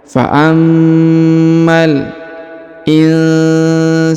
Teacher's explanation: Fa'ammal insanu, perhatikan ini huruf i, ini huruf na atau huruf nun sukun bertemu dengan sa, nun sukun bertemu sa maka didengungkan dan disamarkan. Fa'ammal insanu, huruf sa dipanjangkan 2 harokat karena di depannya terdapat alif.